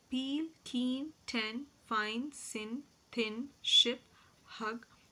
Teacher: they're all voiceless sounds because during the production of these sounds the vocal cords are wide apart and the glotus is also we see open next is voiced